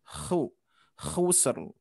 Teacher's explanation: huruf kho mempunyai sifat awalan dengkuran